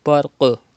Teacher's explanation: Qaf is from qalqala letters. You have to do qalqala. Qalqala means to rebounce the sound.